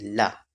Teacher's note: पार्श्विक वर्ण में मुख द्वार बीच में बंद हो जाता है और हवा दोनों ओर से निकल जाती है। मतलब बीच का हिस्सा बंद हो जाता है और हवा जो होती है वायु वो साइड दोनों तरफ से निकल जाती है।